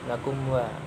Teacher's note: ketika dibaca huruf mimnya tidak boleh dengung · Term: idhar syafawi